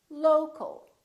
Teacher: we don't say locale or locale we reduce the second syllable and it becomes the local local so you see o el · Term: reduced syllables